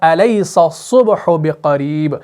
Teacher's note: آپ نے منہ کو پر کرنا ہے، موٹا کرنا ہے تاکہ صاد آپ کا موٹا ادا ہو جائے، اس کے اندر صفت تفخیم ادا ہو جائے.